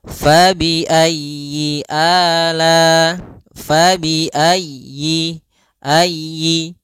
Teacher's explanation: pada lafal fabi ayyi ala, di sini usahakan huruf ya-nya ditekan